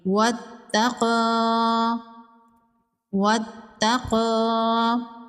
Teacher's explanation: طوا حروف مستعلیہ میں سے ہے، طوا کو پر پڑھیں گے، کھڑی زبر ہے، ایک الف کے برابر کھینچ کے پڑھیں گے، یا کو سائلنٹ کر دیں گے۔ تا پر تشدید ہے، تا کو 2 بار پڑھیں گے